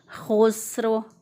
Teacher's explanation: सीन को मोटा नहीं करना, खौ को मोटा करना है और रौ को मोटा करना है।